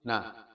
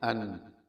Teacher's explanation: Kalau dengung, nun disukun berbunyi an. Jadi na dengan an itu panjang an, walaupun sama-sama satu harokat.